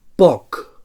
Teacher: So bilabial oclusiu sord.